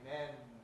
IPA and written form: men (men)